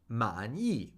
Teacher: Third tone, fourth tone.